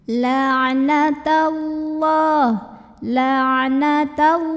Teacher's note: Karena huruf sebelumnya yang ta barisnya di atas fathah. Maka lam ini dibaca dengan menebalkannya ya, tebal, pangkal lidah diangkat. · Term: tafkhim